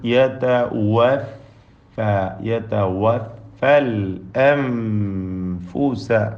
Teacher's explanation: ദീർഘാക്ഷരമായ അലിഫും തഫ്ഹീം ചെയ്യേണ്ടതാണ് തടിപ്പിച്ചു പറയണം അളാഹുവയവ എന്ന് രണ്ടു ചുണ്ടിൽ നിന്നും ഫ എന്ന് താഴെ ചുണ്ടും മേലെ മുൻപല്ലും ചേർത്തുമാണ് ഉച്ചരിക്കുക